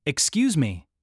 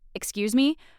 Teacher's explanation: So you need that rising, questioning intonation.